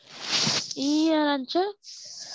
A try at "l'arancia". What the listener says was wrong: La, ricordati quando c'è la L.